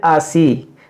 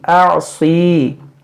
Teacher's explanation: صاد کو باریک پڑھتے ہیں، حمزہ کو عین کو حمزہ پڑھتے ہیں.